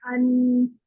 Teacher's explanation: जबान के जो आगे वाला जो हिस्सा होता है, जो बारीक किनारे होते हैं, वो जाके ऊपर लगते हैं 8 दांतों के मसूड़ों पर। अंदर से जहां से तालू से दांत जुड़े हुए हैं ना, वहां से लगता है तो नून अदा होता है।